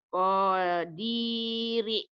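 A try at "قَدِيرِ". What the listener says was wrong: Konya pendek.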